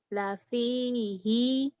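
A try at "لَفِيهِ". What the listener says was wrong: pendek lafihi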